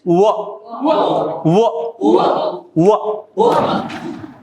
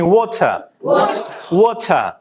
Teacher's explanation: This is a voiced consonant sound, and you can hear at the beginning of the word water, win, word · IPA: /w/